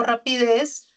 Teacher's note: es aguda, lleva el acento en la última sílaba